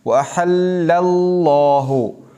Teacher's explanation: احل میں جو لام ہے باریک پڑھا جائے گا